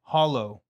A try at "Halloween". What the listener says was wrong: It's an A. We say it how it's spelled.